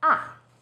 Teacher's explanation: Fourth tone, 四 声, starts high, then falls sharply.